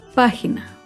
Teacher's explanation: Página se acentúa en la antepenúltima sílaba. Página. Recuerda, todas las palabras esdrújulas llevan tilde. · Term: palabra esdrújula